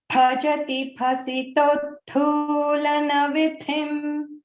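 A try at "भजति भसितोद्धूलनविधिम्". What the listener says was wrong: And also bhasito, that is also a dirgha. It is not bhasito, it is not bhasito dhulana. Bhasito dhulana vidhim. O and U, both are long letters. Bhasito dhulana vidhim.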